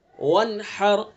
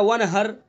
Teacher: ہاں کو حلق سے ادا کریں گے، زبان کے جو حلق کا بیچ ہے وہاں سے ادا کریں گے